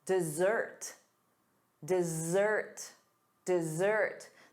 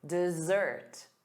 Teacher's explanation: The syllable stress is on the second syllable.